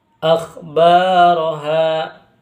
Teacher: Akhbar itu bacaan mad thobi'i. Karena alif sukun didaul harakat fathah yang mana panjangnya dua harakat.